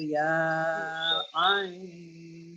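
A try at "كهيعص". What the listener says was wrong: Ya-nya kepanjangan. Ha ya ain. Ha ya ain.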